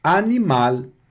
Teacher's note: Antes de vogal, vai perder a característica mais nasalada, ficam pronúncias orais apenas